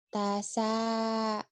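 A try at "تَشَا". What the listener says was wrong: Bener, Tasya. Shinnya kenapa Virus Rehan tuh? Shin, Tasya. Jadi ketahu Shinnya keambil. Tasya, Shin. Tasya.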